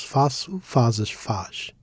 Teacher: Here we place emphasis on the first syllable. This is because by default the penultimate syllable tends to be stressed in Portuguese.